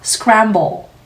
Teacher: dark L 소리 들어가야 하니까요